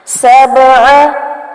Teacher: با پہ کلکلا کریں گے ہلائیں گے